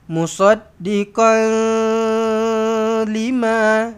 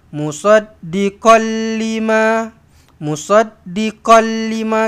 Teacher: Kita idgham masukkan ke dalam lam la ghunnah tidak dengung. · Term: idgham bila ghunnah